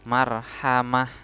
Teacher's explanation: Nah, kemudian yang ini ta di belakang, ta marbuto di belakang dibaca seperti huruf h sukun